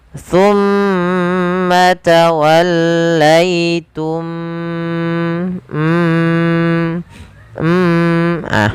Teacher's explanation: masukkan mim yang pertama kepada mim yang kedua dan ditahan suara mimnya. Tumma tawallaitum m ah baru dilepaskan. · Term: idgham mimi